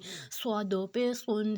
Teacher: اب صاد جو ہے وہ سیٹی والا بھی ہے اور موٹا حروف بھی ہے، اس میں بھی ہم نے اس کو تھوڑا موٹا رکھنا ہے اور تھوڑا سا اس کی سٹارٹ میں سیٹی ہوگی۔ صاد 2 پیش سن، سین کی طرح لمبی سیٹی نہیں ہوگی لیکن تھوڑی ہوگی۔